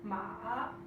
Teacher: For tone 3, we have ma, which means horse, which is a downward, upward tone.